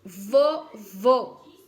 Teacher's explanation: quando é com acento circunflexo o som é bem fechado